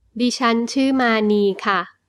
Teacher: the polite particle for female speakers, ค่ะ with a falling tone is used for a normal statement